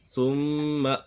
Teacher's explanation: ثم یہاں پر میم مشدد ہے، میم مشدد میں ہمیشہ غنہ ہوتا ہے